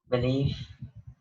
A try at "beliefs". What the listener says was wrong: Beliefs. Your S.